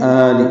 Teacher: لام کی زیر جلدی پڑھیں گے